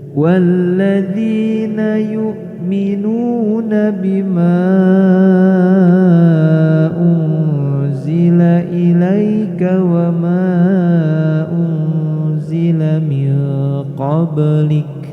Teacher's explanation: Walladzina yu'minuna bima unzila ilaika wa ma unzila min qablik. Bacaan ma dibaca panjang, ini mad jaiz munfasil, dibaca lebih panjang.